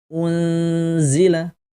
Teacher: karena Za ini adalah huruf istifal kita harus baca dengan tipis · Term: Ikhfa